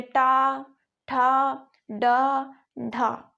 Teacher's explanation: अपनी जिह्वा है वो अपने मुंह के ऊपर एक खुरदरा स्थान है उससे जाकर अपनी जिह्वा टकराती है, एक खुरदरे स्थान से अपनी जिह्वा टकराती है। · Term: मूर्धा